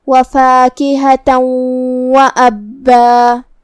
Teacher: کلمت وَأَبًّا میں یہاں شروعات میں حمزۃ قطع ہے، تو ہم حمزہ کو ظاہر کریں گے اور اسے حلق کے نیچے والے حصے سے ادا کریں گے۔ با پہ تشدید ہے تو 2 حرف کے برابر ہم حرف البا کو پڑھیں گے